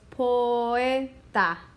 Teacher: The O is strong and the E is strong. So they actually separate into two separate syllables. So actually three syllables when you put them all together, because this last is a syllable, but the O is a separate syllable from the E, and it has two sounds. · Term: hiato